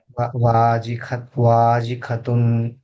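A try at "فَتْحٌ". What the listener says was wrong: ఖా కాదు ఫా. ఫా ఫతా ఫా. వాజి ఫతున్.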